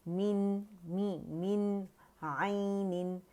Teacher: तो नून का इजहार करेंगे, इसके मखरज पे जाएंगे